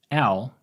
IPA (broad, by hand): æo